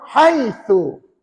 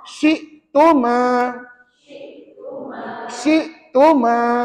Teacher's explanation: Hujung lidah kita keluar sikit, tahan kat gigi kacip. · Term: tha